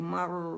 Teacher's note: اور را ساکن سے پھر پہلے زبر آ گئی تو را اگین موٹا پڑ جائے گا